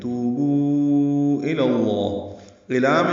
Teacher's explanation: توبو یہ دونوں واو مد ہیں. تو کو 2 حرکات لمبا کرنا ہے, بو کو ہم زیادہ لمبا کرتے ہیں 4 حرکات, کیونکہ اس کے بعد آگے حمزہ آ رہا ہے تو یہ مد منفصل بنی ہے. · لام باریک ہوگا الا کا, لیکن لفظ اللہ کا لام پر پڑھیں گے